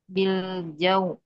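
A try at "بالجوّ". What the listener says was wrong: Jangan pakai ain ya. Jauh. Ah, jadi kalau tadi masuk hidung jadi kayak ini ya, kayak ain. Jauh, jauh, bil jauh.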